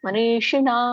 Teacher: ಮೂರ್ದನೇಷ ಒಂದು ಸ್ವಲ್ಪ ರೋಲ್ ಮಾಡಿಕೊಳ್ಳಿ